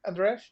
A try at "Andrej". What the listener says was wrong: Yeah, just Andrej. So it's not J. It's like soft.